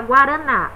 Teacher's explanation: Nós temos na, a última sílaba, que é uma sílaba tônica, né, que seria uma oxítona, e guaranazinho.